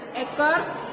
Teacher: vokal sedang atas seperti bunyi E dan o